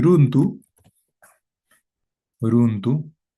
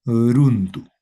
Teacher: solo existe el sonido ra, ra vibrante simple